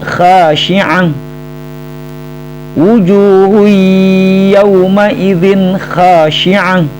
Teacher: ha berharokat tanwin dhammah tain ya, bertemu dengan huruf ya maka dibaca dengung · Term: idgham bigun